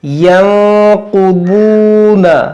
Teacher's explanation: یہاں پر نون ساکن کے بعد قاف حروف اخفا ہے، یہاں پر ہم اخفا کریں گے، اور یہ قاف حروف مشتعلیہ، واو بھی حروف مشتعلیہ، اور یہ واو مدہ ہے، دونوں کو موٹا کریں گے، اس کو کھینچیں گے.